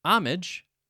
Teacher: with the main syllable stress or emphasis on the first syllable, not the second. My dictionary tells me that this is the accepted pronunciation for both British and American English.